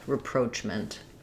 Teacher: because it's stressed on the second syllable letters r a are going to be a reduced schwa vowel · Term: second syllable stress